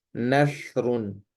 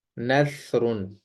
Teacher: سیٹی نہیں ہونی چاہیے، اگر آپ نے یہاں سیٹی لگا دی تو وہ سین بن جائے گی، تو اس کو آپ نے نرمی سے ادا کرنا ہے، نثرن۔